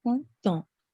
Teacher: So we have the PR sound, and then un, which is a nasal sound. And then next is T, and then we have the on, which is a nasal sound.